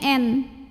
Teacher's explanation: karena nun-nya bertasydid cara bacanya Nun ini dibaca dengan dengung jadi dengung pada Nun bunyinya n tapi suaranya bergetar masuk ke hidung